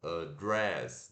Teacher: O dress é a sílaba tônica